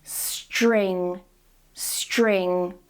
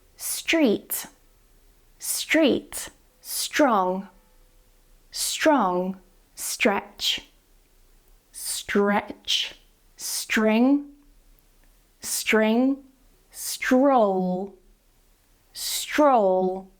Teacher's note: we're not changing the S, the S stays the same, but the T and R change to the CH sound